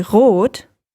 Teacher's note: When I say rot, it's actually the back of my tongue that is lifting up, not the front.